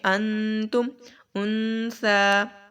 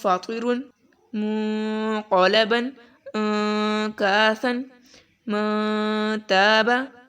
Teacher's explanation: اخفا کا قاعدہ اپلائی کرنا ہے. تم ایسے آواز ناک میں لے کر جانی ہے آپ نے، کہ بالکل نون کی آواز کو پوری طرح سے ادا نہیں کرنا